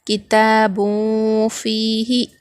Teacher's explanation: یہاں پر دیکھیے تنوین کے بعد حروف اخفا میں سے فا آ رہا، تو یہاں پر بھی ہم نون کی آواز کو ناک میں چھپا کر پڑھیں گے، نون کی آواز کو ظاہر نہیں کریں گے